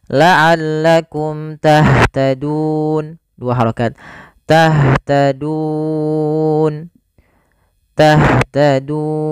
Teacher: panjangnya boleh dua boleh empat dan boleh pula 6 harakat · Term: Mad Arid sukun